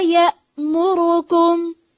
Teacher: हमजा को वाज़ेह करें, इसको या मुरुकुम नहीं पढ़ेंगे